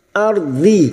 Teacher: ro sukun yang didahului fathah kita baca tafkim